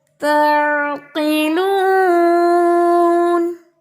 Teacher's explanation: عین کو جھٹکا نہیں دینا. آواز جاتی ہے واپس نہیں آئے گی